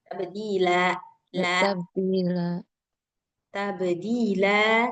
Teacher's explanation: Ujungnya jangan ditambah-tambah hamzah